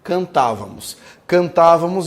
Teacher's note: é uma proparoxítona tem a sílaba tônica como a antepenúltima